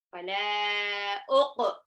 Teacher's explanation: Nah, qafnya dipantul. Pantulnya ke qa